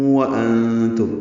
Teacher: انتم میں نون ساکن کے بعد تا آنے کی وجہ سے اخفا ہے، نون کی آواز چھپائیں گے